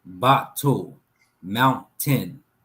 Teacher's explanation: The glottal stop, there's a pause, there's a pause in the breath, and then there's a comeback.